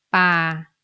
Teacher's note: when it is an open syllable so to pronounce this word you need to pronounce it in the middle tone